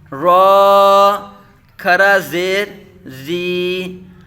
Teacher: جبکہ کھڑا زیر ہے تو یہ باریک پڑھا جائے گا